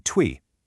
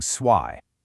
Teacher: Up north, that T sound stayed unshifted. It became twi. But down south, it aggressively shifted to a Z sound, becoming swy.